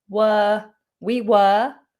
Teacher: The word weren't contains the letter R, but we don't pronounce it.